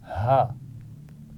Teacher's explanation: اس کا مخرج ہے گلے کا شروع کا حصہ